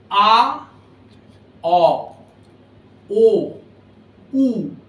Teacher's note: আ, অ, ও, উ। দেখুন উ বলার সময় মুখ ছুচলো হয়ে গেছে, ওর চেয়ে বেশি আর ছুচলো করা যায় না। এই আ থেকে ক্রমশ ছুচলো হতে হতে উতে যাচ্ছে, আর উল্টো দিকে আ থেকে ক্রমশ এই ঠোঁটের দুটো প্রান্ত চওড়া হতে হতে ই এর দিকে যাচ্ছে।